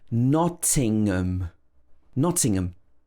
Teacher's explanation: it's got the ng sound where your tongue rises up to the back of your mouth to make this ng sound. And then we have ngum at the end.